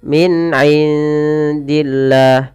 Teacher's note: Jelaskan suara nun ketika bertemu dengan huruf ain karena ia ada bacaan izhar, yaitu artinya jelas, al-wuduh wal bayan, artinya jelas.